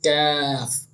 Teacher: काफ जो है ये जबान की जड़ और तालु के सख्त हिस्से से अदा होता है।